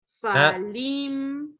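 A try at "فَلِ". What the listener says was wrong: Not lim. Lam kasra li.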